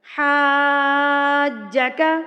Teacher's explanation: اگر مد کے بعد تشدید آ جائے تو یہ مد لازم کہلاتی ہے۔ اس کو آپ نے 4 حرکات کے برابر کھینچ کے پڑھنا ہے۔